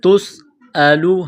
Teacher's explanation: سین میں سیٹی کی آواز پیدا کرنی ہے تا کو باریک کرنا ہے تسألوا حمزہ زبر لام پیش لو تسألوا عن عین نون زبر